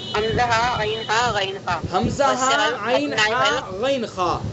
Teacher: حمزہ اقصائے حلق، عین ہا حلق کا درمیان، غین خا منہ کی طرف والا حصہ